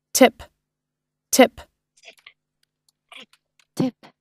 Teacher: hơn y ngắn thì ít bẹt hơn ha kiểu vậy nè lưỡi thì mình sẽ xuống thấp hơn so với y dài thay vì y dài mình cong lên mình đẩ ra phía